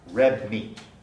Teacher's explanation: red ends in a alveolar stop and the following word meat begins with a bilabial nasal that's the kind of context where we get place assimilation red · we don't pronounce the d perfectly clearly it undergoes place assimilation